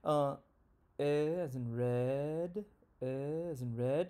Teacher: what that means is that when i say red my tongue is in mid low and in the front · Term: front lower vowel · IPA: /ɛ/